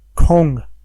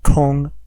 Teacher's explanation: Kong means free time it's the fourth tone note that Kong means Sky first tone